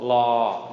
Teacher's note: this letter is called la, long mid-tone, just like la ling, la, long mid-tone